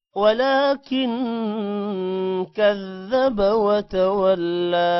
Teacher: ولكن لا لمبا ہوگا کھڑی زبر کی وجہ سے کن پر غنہ ہوگا